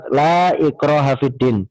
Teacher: mad munfasil ini wajib mutlak untuk kita pendekkan atau kita baca menjadi 2 harokat · La, mad, kemudian ikraha bertemu dengan hamzah, maka 2 kalimat yang terpisah disebut dengan mad munfasil atau mad yang terpisah